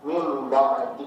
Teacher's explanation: Udah ya, jadi si nunnya kita rubah menjadi mim. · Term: iqlab